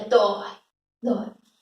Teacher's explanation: monossílabo que tem um ditongo aberto, OI.